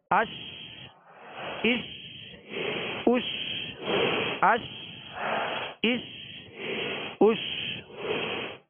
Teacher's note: تو شین کو جب ادا کریں گے تو بیچ زبان، بیچ تالو سے لگے گا تو شین ادا ہوگی، اور شین کی ادائیگی میں آواز منہ میں پھیل جائے گی